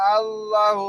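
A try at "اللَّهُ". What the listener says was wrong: ভাই আল্লাহ আল্লাহ টান আছে ভাই, একবার এটা কমন একবার আল্লাহু সারা জীবন যত আল্লাহু বলবেন সবগুলোতে টান আছে। ঠিক আছে, আল্লাহ।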